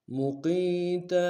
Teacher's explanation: مدہ کے انداز میں کھینچیں گے تاکہ تنوین غنہ کریں گے، وقت میں تنوین کو الف سے بدلیں گے